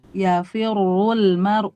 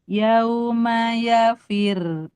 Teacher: Ro tasdid fathah atau dhammah ketika wasol wajib dibaca tebal meskipun sebelumnya kasroh. Adapun ketika wakof, ro-nya dibaca tipis karena melihat harokat kasroh sebelumnya.